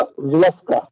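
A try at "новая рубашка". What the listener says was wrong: नोवाया दस्का. रुबाश्का. सा नहीं है इसमें. श. रुबाश्का. रुबाश्का. रुबाश्का.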